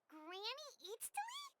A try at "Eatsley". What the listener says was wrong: Yes, Granny Eatsley. But emphasis on Eatsley, not Granny.